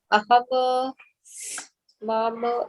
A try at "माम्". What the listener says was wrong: मामा नहीं, माम। वहां पे आपको हलंत दिख रहा है, राइट? सो जब हलंत होता है तो आपको माम करके ही उच्चारण करना है, मामा नहीं होता। अगर आपको मामा लिखना है तो मैं मामा ऐसे लिखूंगी। Do you see the screen? This is मामा, but when I put this it is माम।